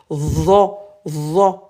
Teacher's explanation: Cette lettre, c'est la lettre zo, c'est le Z mais fort et la langue au niveau des incisives